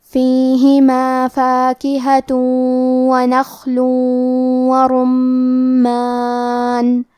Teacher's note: نخل ورمان، کلمت رمان میں را پہ پیش ہے، تو ہمیں حرف الرا کو تفخیم سے پڑھنا ہے۔ میم پہ تشدید ہے تو ہم دو حرف کے برابر میم کو پڑھیں گے۔